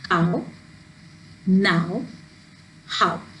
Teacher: This is ow, as in cow, now, how. So these are vowel glides where you can see 2 vowels coming together, and these are all single syllable words